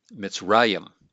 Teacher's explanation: notice the accent here in the second to last syllable, the pretonic syllable. And so we have mitz, that's our first syllable there.